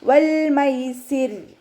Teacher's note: ഇനി നമ്മളിവിടെ വഖഫ് ചെയ്യുകയാണെങ്കിൽ റോക്ക് സുക്കൂനായിട്ടാണല്ലോ ഇവിടെ വഖഫ് ചെയ്യുക. റോക്ക് സുക്കൂനും അതിൻ്റെ മുന്നേ ഉള്ള അക്ഷരത്തിന് കെസ്റയും വരുമ്പോൾ നമ്മൾ റോ ലൈറ്റ് ആക്കിയിട്ടാണ് വഖഫ് ചെയ്യുക കേട്ടോ. വൽ മൈസിർ എന്ന് പറഞ്ഞിട്ട് വഖഫ് ചെയ്യൂല.